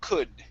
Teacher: instead of an o sound it's an uh sound